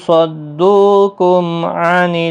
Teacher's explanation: میم ساکن کے بعد عین آیا ہے، اظہار شفوی ہوگا